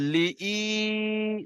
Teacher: ইয়া মাদ্দাকে একালি পরিমাণ টান দিয়ে পড়তে হবে।